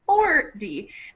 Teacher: that T, even though it's a T, it really is pronounced like a D · 40 50 60 has the stress on the first syllable. So it sounds more like 40.